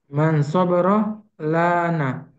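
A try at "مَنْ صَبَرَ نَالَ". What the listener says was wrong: Nala, nala bukan lana, nala. Nala itu dia akan akan berhasil.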